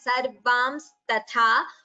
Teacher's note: The ta is alpa prana, tha is mahaprana. That should not be interchanged. It should be chanted as sarvams tatha.